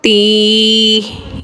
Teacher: वाव ता ज़बर वत, ता या ज़ेर ती। यहाँ पे या मद्दा हुआ है, एक अलिफ की मिकदार खींचा